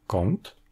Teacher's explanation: avant une consonne vélaire, ce sera plutôt la nasale vélaire [ŋ] que l'on entendra